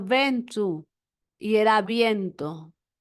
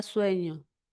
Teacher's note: Ahora, las vocales E y O, breves y tónicas, pasaron a ser diptongos.